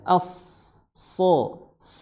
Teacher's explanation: makhrajnya adalah di ujung lidah bertemu dengan gigi sari bawah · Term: shad